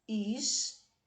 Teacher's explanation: A última sílaba apresenta a vogal A, que é a mais forte, e uma semivogal, que é mais fraca que o A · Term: ditongo crescente